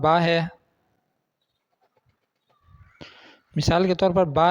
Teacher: دونوں ہونٹوں کے آپس میں ملنے سے با ادا ہوتا ہے، با نکلتا ہے۔